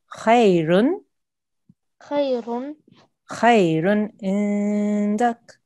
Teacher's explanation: you need to make a sharp sound. You don't need to make an elongated nasal sound.